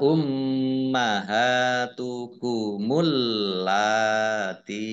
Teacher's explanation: mim tasdid dibaca mendengung atau ghunah ditahan dua harakat ha fathah berdiri Mad thii dua harakat allati lamnya dibaca dobel